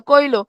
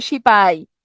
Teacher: উচ্চারণের সুবিধার জন্য শব্দের মাঝখান থেকে যদি হ লোপ পায় সেটা হবে হকার লোপ